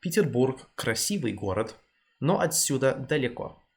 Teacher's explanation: the V in красивый isn't particularly soft, it's quite a quick one, quite a hard one.